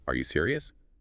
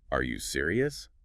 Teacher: If you say, are you serious? Flat. It barely sounds like a question. But add that little upward flick at the end, are you serious?